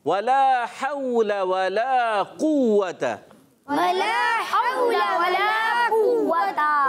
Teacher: वला को खींचेंगे, लाम अलिफ ज़बर, ला एक अलिफ खींचना है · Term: अलिफ मद्दा